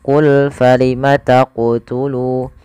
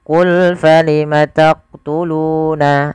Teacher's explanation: Maka ketika melafalkan huruf qaf di sini harus memantul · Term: qalqalah